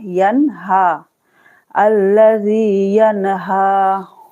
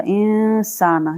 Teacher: नून को वाजे करके पढ़ना है, इसको कहा जाता है इजहार